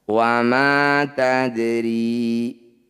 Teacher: Sesuai namanya bunyi dal, pantulkan tapi jangan berlebihan. Cukup dialirkan. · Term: qalqalah sugro